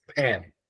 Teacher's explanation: when we say just pan, then it gets aspirated, and in that case, it is spoken as pan, because it is at a word initial position and also at a syllable initial position.